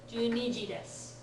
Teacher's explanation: Unlike su, ni does not lose its vowel. It gets fully pronounced.